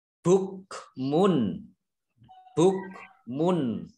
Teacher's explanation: dhammah tanwin bertemu dengan huruf ba, bacaan ikhlab ikhlab ya, membalik ba-nya dibaca mim ya.